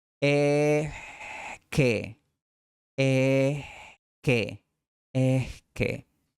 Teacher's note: Además, la s aspirada no es exactamente igual a la h inglesa, sino que en realidad es una extensión ensordecida de la vocal. Es como si susurraras la vocal un instante.